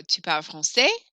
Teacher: waiting for my voice to go up at the end